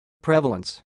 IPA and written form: ˈprɛvələns (prevalence)